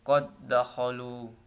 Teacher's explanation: idgham ini terjadi karena pertemuan 2 huruf yang sama sifat dan makhraj atau tempat keluar huruf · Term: idgham mutamatsilain